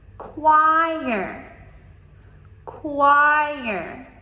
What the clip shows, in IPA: ˈkwaɪər